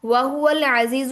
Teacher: عین دوبارہ پھر وسط الحلق سے نکلے گا